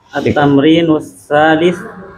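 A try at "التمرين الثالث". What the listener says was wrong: Jangan dijasem. Kalau belajar jangan dijasem. Harus lengkap harokatnya biar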